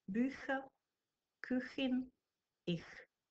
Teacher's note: Já jsem vám říkala, že němčina nemá ch, čili kombinace hlásky ch, čteme měkce v případě, že následuje po samohláskách ö, i, ü, oj, aj